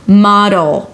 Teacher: it's a D that shifts immediately to the L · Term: light D